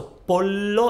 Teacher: So pollo, it's L, so your tongue is against your teeth, but it's not moving.